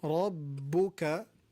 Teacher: Rabbuka, Ra heavy, Ba and Kaf light